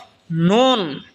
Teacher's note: নুন জিহ্বার আগা তার বরাবর উপরে তালের সঙ্গে লাগা উচ্চারণ হবে নুন